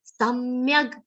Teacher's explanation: Sa is followed by half ma and a complete ya. Ya is followed by half ga.